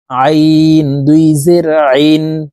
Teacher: আইন হরফের উচ্চারণ হলকের মধ্যখান থেকে চাপ দিয়ে পড়তে হবে, কারণ আইনের মখরাজ হলকের মধ্যখান থেকে হবে।